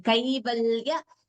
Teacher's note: Note the Dvitvam there. The L is doubling.